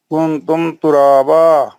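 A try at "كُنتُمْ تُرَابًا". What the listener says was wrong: گننا کیجئے. گننا नाक से आवाज निकालिए।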